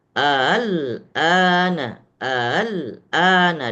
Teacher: Ah kalau ini membaca alana itu cara membaca dengan cara mad lazim kalimi mukhaffaf. Kalau kita mau membaca dengan cara tasil hamzah maka cukup dua harakat tetapi dengan ada nabar.